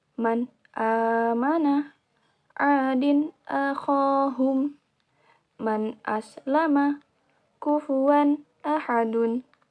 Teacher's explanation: Nun sukun atau tanwin yang berhadapan dengan huruf hamzah harus dibaca jelas. Hati-hati, nun sukun jangan sampai tawallud. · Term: idhar